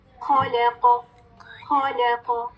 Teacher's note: اب ہم قاف کو ساکن کریں گے, اور کون سے لیٹرز میں سے یہ قاف توبہ جیم دال. جب ہم ساکن کریں گے قاف تو آواز باؤنس بیک کرے گی, پلٹے گی